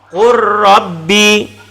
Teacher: Qul rabbi menjadi qur rabbi. Lam hilang masuk kepada ra. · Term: idgham mutaqaribain